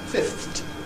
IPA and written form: fɪfθt (fifthed)